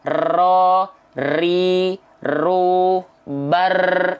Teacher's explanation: Huruf R dilafalkan dengan getaran yang banyak.